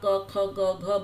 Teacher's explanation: इन सब की आवाज़ गले से निकलती है, इसलिए इसको कंठ कहा जाता है, कंठ वर्ण।